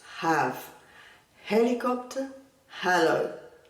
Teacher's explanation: la H, que no es muda como en español, es un sonido aspirado, parecido al sonido de la J, pero mucho más suave.